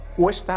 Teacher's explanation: una O que era breve tónica se ha alargado en UE